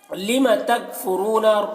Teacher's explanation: تکفرون میں را کو پر پڑھیں گے اور یہاں پر واو مدہ ہے۔